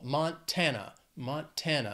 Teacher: three syllables stresses on that second syllable